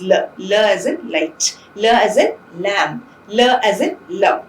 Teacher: the tip of the tongue is brought into close contact with the alveolar ridge, and the sides of the tongue or the rims of the tongue are lowered so that the air would escape through the rims, through the gap that is caused by the lowering of the tongue, right? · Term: lateral